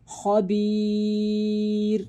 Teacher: را ساکن سے پہلے یا ساکنہ ہو تو ان سب صورتوں میں را کو باریک پڑھیں گے، یعنی مثال کے طور پہ خبیر، را پر وقف کیا، را ساکن ہو گیا، اس سے پہلے یا ساکن ہے تو را کو باریک پڑھا جائے گا